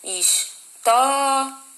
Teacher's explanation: Terminou em ditongo, semivogal mais vogal, tá? O tó é a sílaba mais forte, ou seja, é uma paroxítona mesmo.